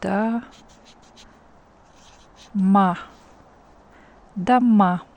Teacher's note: And the A here is stressed. O is not stressed, so we pronounce it like da ma